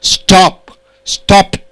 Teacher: Word ending with unvoiced consonant P, you add ed. Ed is pronounced as T.